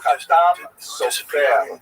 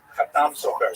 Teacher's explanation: Khatam Sofer, Sephardi pronunciation. Obviously, some of the consonants are slightly different, and the emphasis tends to be on the last syllable.